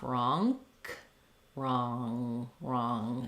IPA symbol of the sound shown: ŋ